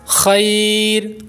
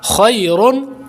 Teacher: وقف کی صورت میں را باریک ہو جائے گا، کیونکہ ابھی ہم نے سمجھا ہے سبق نمبر 16 کی جو ہم نے اردو عبارت پڑھی ہے اس میں کہ را ساکن سے پہلے اگر یائے ساکنہ آ جائے تو را کو باریک کریں گے.